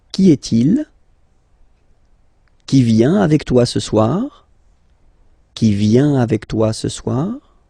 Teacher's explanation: If you pronounce them normally, remember that you will have to raise your voice a little bit at the end of the question